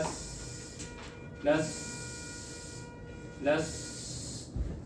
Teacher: لس سین کو جب آپ پڑھیں گے تو آپ کا سانس جاری رہنا چاہیے